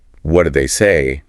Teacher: The stress is on say, and the question have that downward inflection we expect from what questions.